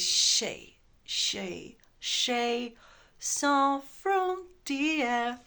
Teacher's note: But in this case, it's stranger even because you hear like a shay, it should be a schwa, but it's even like shay. You've got a diphthong kind of.